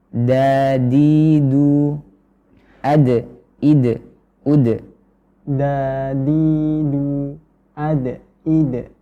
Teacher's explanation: ujung lidah menempel ke Pangkal gigi seri Jadi bukan di ujung gigi seri tapi agak-agak naik sedikit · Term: huruf Dal, huruf dal